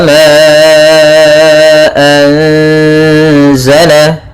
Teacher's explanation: Wa ma anzala, pada lafal ma ada mad jaiz munfasil, yaitu ditandai dengan adanya hamzah yang datang setelah huruf mad dan hamzahnya di lain kata, maka panjangnya 4 harakat